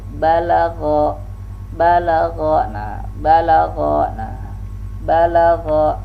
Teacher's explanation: Balagha, balagha, nah balagha, nah balagha. Gha ini dia al-isti'la dengan mengangkat pangkal lidah, sehingga mengakibatkan huruf gha itu berat, besar ya bunyinya, besar. Kalau gha ini jelas ya al-ismat ya, membunyikan huruf dengan besar suara kita.